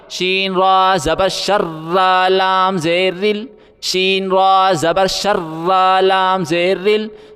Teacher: را باریک پڑھا جائے گا، را کے نیچے زیر ہے